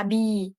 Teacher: Bibir ini digunakan untuk menghasilkan huruf ba, mim, wau, dan fa dalam kata abi.